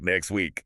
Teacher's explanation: The tongue just decides it doesn't have time to tap the roof of the mouth for the tea, so it skips it.